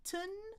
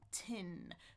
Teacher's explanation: One is the schwa, tun. One is the short I, tin.